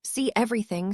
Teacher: When two vowel sounds come together, native speakers insert a small W or Y sound. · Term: Vowelto vowel linking